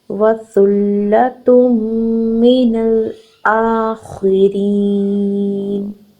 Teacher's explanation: یہاں پر حمزہ کے اوپر ہے کھڑی زبر، اس کو ہم نے 2 حرکت لمبا کرنا ہے. · خا ایک ہیوی لیٹر ہے، اس کو ہم نے ہیویلی پروڈیوس کرنا ہے، فل آف ماؤتھ پروڈیوس کرنا ہے · تا کے اوپر ہے پیش تنوین، اس کو فوراً نیکسٹ ورڈ میں میم مشدد کے ساتھ ملا کے ادا کرنا ہے، غنہ کرتے ہوئے ادا کرنا ہے.